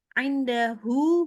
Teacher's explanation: hu-nya ini 2 harokat aja, jangan panjang-panjang.